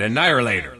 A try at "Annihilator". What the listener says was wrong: there's no R in there